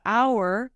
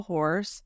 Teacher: though in hour the H is not aspirated, and in horse it is